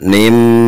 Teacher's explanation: wajib di sini kita ketika mengucapkan nim itu ada suara yang masuk ke rongga hidung, karena ini adalah idgham bigunnah, artinya idgham yang pakai gunnah.